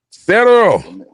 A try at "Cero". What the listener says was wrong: Cero. You gotta roll that. Roll the tongue.